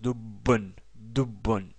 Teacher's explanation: il y a ici un doublement de la consonne ba. Sinon, on aurait prononcé dubun.